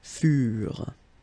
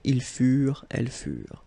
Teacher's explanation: the ending for the plural form is never pronounced